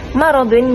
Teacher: Jadi, maradun, mim di situ perlu ditipiskan. Tidak boleh ditebalkan disebabkan selepasnya ada huruf ra yang tebal.